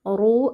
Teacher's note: Rnya dibaca tebal karena rnya berharakat dammah